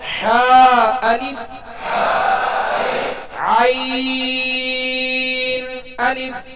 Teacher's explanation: हा और ऐन का एक ही मखराज है। यानी दरमियान हल्क से अदा होते हैं।